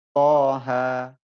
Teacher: mad lazim harfi mukhaffaf wajib panjang 2 harokat panjangnya ya. Seperti kalimat toha.